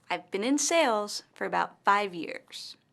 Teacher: in this sentence the word sales and five years are stressed